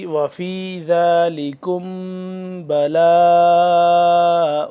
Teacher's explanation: اخفا کرنا مطلب ناک میں آواز کو لے کے جانا تھوڑی دیر کے لیے